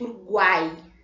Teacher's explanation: o U mais fraco, o A é o que o som prevalece, é o que fica mais forte. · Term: tritongos